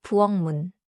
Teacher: 문 starts with 미음, so after 키읔 becomes 기역, the sound can nasalize before 미음.